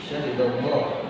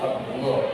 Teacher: lam yang dibaca tafkhim atau tebal